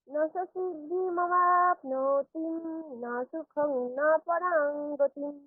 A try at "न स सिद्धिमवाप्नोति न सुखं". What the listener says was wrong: এখানে খেয়াল রাখবেন, ওই অবাপ্নোতি বলে দীর্ঘ অবাপ্নোতি না সুখম, এরকম দীর্ঘ তয় হ্রস্বইকার বললে হবে না, কি করতে হবে? অবাপ্নোতি না সুখম, তি ন একসঙ্গে। আবার বলছি আমি, না সা সিদ্ধিম অবাপ্নোতি না সুখম না পরাং গতিম।